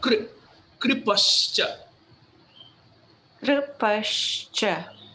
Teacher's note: Kri, tongue gets rolled for the R dot